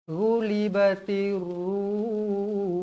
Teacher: Bila kita berhenti, hukumnya mad arid lis sukun. Boleh dibaca dengan kadar 2 atau 4 atau 6 harakat.